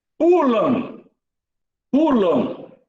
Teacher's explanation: O M tem som de W.